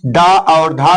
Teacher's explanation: और प्यारे बच्चों, मैं आपको बता दूं कि इसको ताड़नजात क्यों कहा जाता है, क्योंकि जब हम इन स्वर्ण का उच्चारण करते हैं तो हमें अपनी जीवा को आगे की तरफ फेंकना पड़ता है, इसलिए डा और ढा को ताड़नजात कहा जाता है